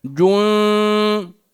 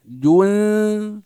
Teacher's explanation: فإذا سمعت من يقرأ جون نقول غير صحيح، هذه نون ساكنة مخفاة، فلا نضم الشفتين فيها